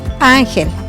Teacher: Tiene su sílaba tónica en la AN y la vocal tónica es la A